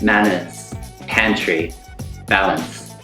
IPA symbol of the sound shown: æ